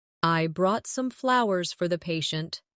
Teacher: Stress flowers to show the gesture.